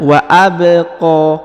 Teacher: huruf ba karena dia berharakat sukun atau berharakat mati maka dipantulkan · huruf qo dipanjangkan dua harakat karena di atasnya terdapat Alif kecil · Huruf ba karena dia berharokat sukun atau berharokat mati, maka dipantulkan ya bacaannya wa abqa. Huruf qa dipanjangkan 2 harokat karena di atasnya terdapat alif kecil dan di depannya terdapat alif bengkok atau alif maksurah.